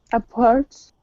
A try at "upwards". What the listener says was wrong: Upwards. No, just the first syllable is stressed. Upwards.